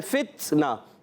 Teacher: فا کو تا سے ملائیں، فتنا تا حرف ہے، یہ شدیدہ محموس حرف ہے. سختی کے ساتھ آواز بند ہونے کے بعد پستی اور نرمی سانس جاری ہوتا ہے.